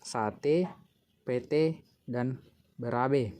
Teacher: bunyi e Tengah atas tak bundar depan apabila berada pada silab terbuka